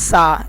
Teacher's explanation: یہ حرف ادا ہوتا ہے زبان کی نوک اور اوپر والے دانتوں کے کناروں کے ساتھ۔ یہ جو آواز آتی ہے یہ سیٹی کی آواز ہے، ہم نے یہاں پر سیٹی کی آواز پیدا نہیں کرنی، ہم نے اس کو ختم کرنا ہے۔